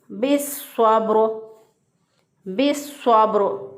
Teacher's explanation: रा वक़फ़ सूरत में साकिन, उससे पहले वाला हरफ भी साकिन, उससे पहले वाले हरफ पर ज़बर, तो इसको रा को मोटा पढ़ेंगे